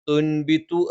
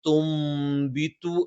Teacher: നൂനിനെ നമ്മൾ മീമാക്കി മറിച്ച് മണിക്കും. തുൻബിതു എന്ന് പറയുന്നതിന് പകരം തുംബിതു എന്ന് പറയും.